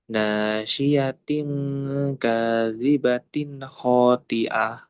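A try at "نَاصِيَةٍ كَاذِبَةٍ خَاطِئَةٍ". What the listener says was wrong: Dan ti. Ti. Tebalkan tadi. Ti. Khoti'ah.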